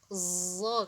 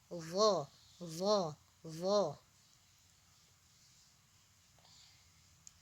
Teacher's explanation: Dha dikeluarkan sedikit, lidah bahagian tengah dinaikkan ke arah langit-langit. Dha, dha, dha.